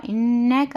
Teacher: نون میں گننا کرنا ہے کیونکہ نون مشدد ہے اس لیے ہم گننا کے ساتھ پڑھنا ہے